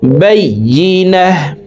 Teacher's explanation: ওয়াকফের ক্ষেত্রে হার উচ্চারণ করব এবং হাকে সাকিন করে ফেলব।